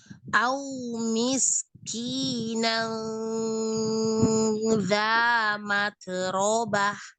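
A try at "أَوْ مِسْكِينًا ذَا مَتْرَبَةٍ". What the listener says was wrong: Taknya jangan memantul, taknya hamas aja. Matrobah. Matrobah, maknya jangan diayun.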